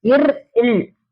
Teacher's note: மேல்வாயோடைய நாக்கு நுனியை வருடுவதால் பிறக்கின்றது